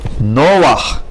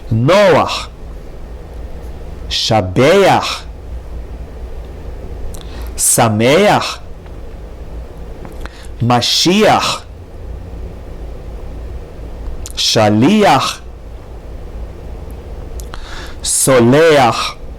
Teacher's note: under het at the end of the word, we read the vowel first and then consonant. Again, this is only with this specific vowel, no other vowels.